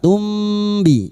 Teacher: Kali ini bertemu ba ikfa syafawi, kita samarkan bunyi mim sukun dan mendengung selama 3 harokat. Tumbi, dan siap-siap membunyikan huruf ba.